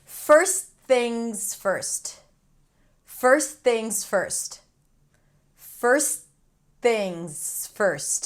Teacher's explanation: When the T appears between two consonants, it's okay to drop it.